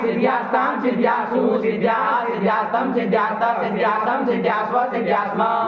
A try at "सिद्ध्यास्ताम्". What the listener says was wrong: यही बन गया सिद्धिया। विसर्ग नहीं बोलते हो तुम, अशुद्ध बोल रहे हो, सुधारो उसको। सिद्धिया सिद्धिया बोले हो तुम। ये सिंधिया नहीं ना होता इधर, सिद्धिया सिद्धिया नहीं ना होता, विसर्ग करेगा।